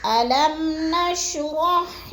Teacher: میم کو ہم نے سختی جمعوں کے ساتھ نہیں پڑھنا، آرام آرام ادا کرنا ہے، غنہ نہیں کرنا